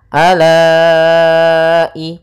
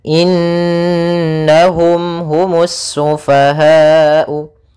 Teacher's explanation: nunnya kita tahan dulu suaraannya sepanjang 2 harakat, baru dimasukkan kena sambil suara nunnya dimasukkan ke rongga hidung kita karena dia gunnah